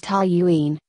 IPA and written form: ˈtɒljuːiːn (Toluene)